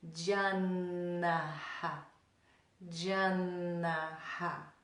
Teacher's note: when we make the na sound, we put the tongue on the very back of the upper teeth and then just draw it back.